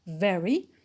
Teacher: very is an adverb we stress the first syllable